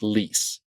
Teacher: in English when we say a word like lease the back and front of your tongue both will come up towards the roof of your mouth